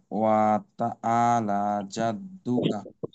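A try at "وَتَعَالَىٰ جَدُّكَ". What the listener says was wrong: এখানে কথা আলা বললে আইন বোঝা যায় না এখানে, তখন এইটা কিন্তু বড় ভুল হিসেবে গণ্য করা হবে। এটা আইনে অবশ্যই চাপ দিতে হবে।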